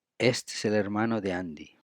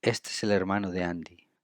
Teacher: We put together as well de and Andy.